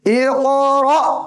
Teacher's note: قاف قلقلہ بھی ہے موٹا بھی ہے، اور را کے آگے الف کی شکل میں حمزہ.